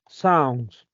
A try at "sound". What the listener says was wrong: Sound, perfect.